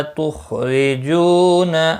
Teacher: خا مستعلیہ ہے پر پڑھا جائے گا